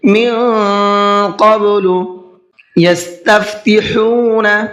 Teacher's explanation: ہا کو حلق سے نکال کر کے پڑھنا ہے